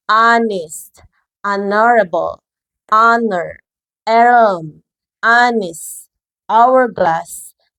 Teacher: tulisannya konsonan, tetapi bunyi pertamanya vokal. Jadi bunyi pertamanya itu vokal atau dalam bahasa Inggris disebut dengan vowel sound ya.